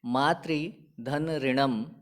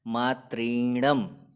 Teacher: पहले पद के अंत में री है और दूसरे पद के प्रारंभ में भी री है। दोनों रीकारों को मिलाने पर हमें दीर्घ रीकार प्राप्त होता है और नया शब्द निष्पन्न होता है मातृणम।